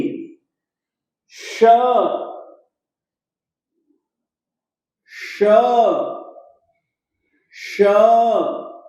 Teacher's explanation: तालव्य श बोलिएगा, दंत्य स न बोलिए और मूर्धन्य श भी मत बोलिए